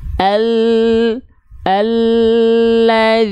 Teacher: dilafalkan dari tepi lidah bagian depan yang kanan serta tepi lidah bagian depan yang kiri kedua tepi lidah depan tersebut menyusur sampai ke ujung lidah disentuhkan ke langit-langit